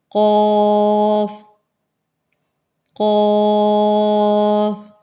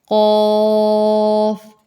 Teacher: قاف قاف، بالکل یہ جو ہمارا قلقلہ کرنے والی جو جگہ ہوتی ہے حلق، اس کے آگے سے اس کو ادا کریں۔ قاف موٹا کریں، ہونٹوں کو گول نہیں کرنا، حلق سے ادا کیا جائے گا۔ قاف، اور آخر میں فا کی آواز، قاف۔